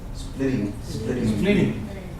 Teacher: actually these two T's are gonna sound like a d